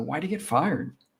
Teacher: stress on fire because we stress the nouns and the verbs in sentences. So, fire is the key word here.